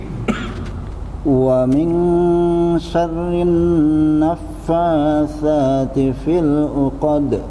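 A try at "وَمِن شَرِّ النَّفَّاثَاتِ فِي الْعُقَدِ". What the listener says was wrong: Tadi sama syarri. Syarnya itu ada haknya Pak ya. Hak getarannya itu jadi kayak ada hentakan. Wa min syarrin. Jangan flat, jangan syarrin naffa.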